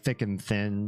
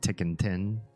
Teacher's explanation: she can't say the th sounds so like thick and thin she just says like tick and tin